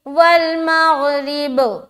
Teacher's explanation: لیکن جب ہم یہاں اسٹاپ کریں گے تو ہم کیا پڑھیں گے؟ والمغرب, قلقلہ کریں گے کیونکہ با حروف قلقلہ میں سے ایک ہے